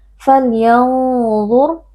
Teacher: Falyanzur, nun sukun berjumpa dengan dha, di sini berlaku hukum ikhfa hakiki dan karena dha merupakan huruf tafkhim atau huruf tebal, maka ikhfanya adalah ikhfa mufakham atau ikhfa yang dibaca tebal. Kita baca falyanzur dengan dengung yang disamarkan dan dengungnya ditebalkan.